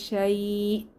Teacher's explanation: হামজা এর উপর সাকিন হলে একটু ধাক্কা দিয়ে পড়তে হয়